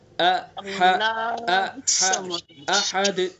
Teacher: ہا کو حلق کے بیچ سے، اور حمزہ کو ابھی آپ نے پڑھا ہے تھوڑا نیچے سے، سینے کی طرف سے، احد۔ تو اس طرح سے خوب واضح کر کے حرف کو ادا کرنا ہے، قل هو اللہ احد، احد، ٹھیک ہے۔ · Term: حمزہ اور ہا